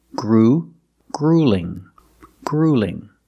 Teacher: The first vowel is the long oo, like food and boot.